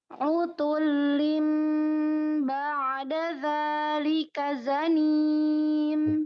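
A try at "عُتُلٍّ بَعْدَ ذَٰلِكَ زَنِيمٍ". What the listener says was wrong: Hati-hati ba'da ain jangan mantul. Ba'da ini sudah jelas karena jadi kol-kolah ilegal. Kol-kolah yang enggak pada tempatnya. Utulin ba'da dzalika. Ain itu bainiyah atau tawassut ya. Secara iktibar sautnya suaranya.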